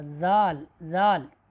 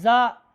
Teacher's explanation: زال باریک پڑھی جائے گی اور اس میں سختی بھی نہیں ہے، جبکہ زا میں تھوڑی سی سختی ہے، یہ حروف صفیر میں سے ہے۔